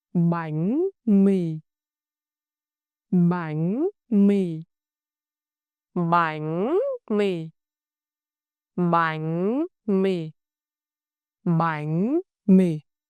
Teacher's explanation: Shape your lips to smile for the vowel E and apply the sắc rising tone on bánh and the low falling tone on mì.